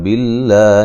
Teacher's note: لفظ اللہ کو باریک پڑھیں گے، اس سے پہلے زیر ہے